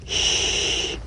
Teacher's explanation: the distant wind-like sound of the sh is made by bringing the side teeth gently together and shushing quietly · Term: unvoiced tongue blade s sound